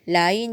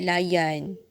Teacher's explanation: huruf ya menjadi bunyi konsonan Y, bukan I. Ya jadi Y.